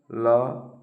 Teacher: पार्श्विक का अर्थ है जीहवा के दोनों ओर से वायु का बाहर निकलना